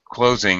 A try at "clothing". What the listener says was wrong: No, don't drop your tongue. Clothing. Leave your tongue up there. Let it drop slowly, not suddenly.